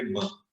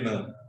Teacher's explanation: they are called nasal sounds, because when you want to utter this, the air from your lungs, they come out through your nostrils. You cannot close your nostrils and say ma.